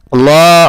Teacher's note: Lamnya di sini yang di tengah adalah lamul jalalah mufakhamah. Lamul jalalah yang bertebal.